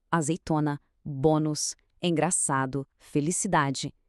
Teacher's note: Repara bem, em todas elas a força cai na penúltima sílaba. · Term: paroxítona